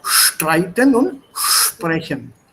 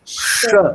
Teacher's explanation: SP im Sprechen und ST im Streiten. They are pronounced with an sh sound.